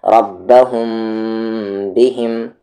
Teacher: آواز کو ناک میں چھپانا تو ہے لیکن لپس کو ملا دینا ہے، اور کچھ کہتے ہیں کہ لپس کو ذرا سا الگ ہی رکھنا ہے۔